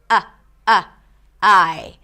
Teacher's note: when there is a word that starts with a vowel, like I, usually there is a very small glottal stop at the beginning of the word